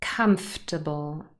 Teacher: the o r is not really pronounced